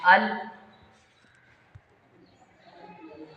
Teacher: फिर इसी को तो हम इन्हिराफ कहते हैं। यानी लाम की अदायगी में ज़ुबान चिपक रही है लेकिन आवाज़ फिर भी लाम की ही निकल रही है